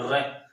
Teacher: व्यंजन होते हैं पकंप व्यंजन और पकंप व्यंजन क्या होता है वे व्यंजन जिनके उच्चारण में जिव्या को क्या करना पड़ता है दो तीन बार कंपन करना पड़ता है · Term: लुंठित वर्ण